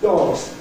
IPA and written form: dɒgz (dogs)